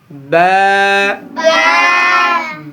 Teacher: >> বাতে উচ্চারণ করব আমরা >> ঠোটের ভেজা অংশ থেকে >> ঠোটের ভেজা অংশ থেকে আমরা বা উচ্চারণ করব